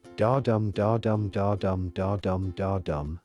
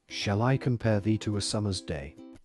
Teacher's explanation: Each da-dum is an iamb, an unstressed syllable followed by a stressed one. This steady beat gives the poem a natural, speech-like music. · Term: iambic pentameter